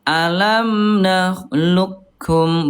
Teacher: Jadi langsung ke kaf ini idgamnya idgham kamil sempurna. Betul-betul huruf kofnya enggak muncul.